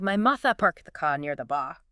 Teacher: You can hear how those dropped R's shift the whole feel of the sentence.